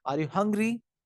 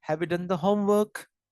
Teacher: how the voice rises at the end of a sentence, especially in the yes or no questions. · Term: rising intonation